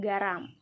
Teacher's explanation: bunyi hambat dorsovelar bersuara